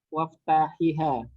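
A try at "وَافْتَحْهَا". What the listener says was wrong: Tidak berharokat itu haknya. Waftahha. Karena asalnya fil amarnya apa di situ? Fil amarnya apa? Iftah ya, makanya tidak diapa-apakan itu haknya ya.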